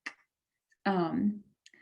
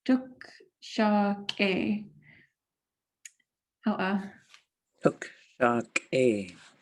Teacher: So it sounds like a, instead of a regular K like ka, it's more like so the air is stopped abruptly right after you say the K sound. So tuk sha K.